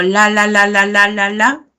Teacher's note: la punta de la lengua llega hacia este lugar no llega solo a los dientes llega más atrás entonces a estas zonas se le llama violes lo mismo sucede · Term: alveolares